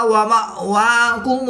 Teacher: حمزہ ساکن ہے تو اس کو جھٹکا دے کر پڑھیں گے